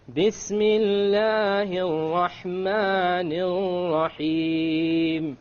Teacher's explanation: Notice the 2 R's with the shadda on them in the Rahman. I didn't roll them. Remember we talked about we're not allowed to roll them.